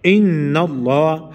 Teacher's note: چې کله دا شد راشي نو نون مشدد شو، نو دا به غنه کیږي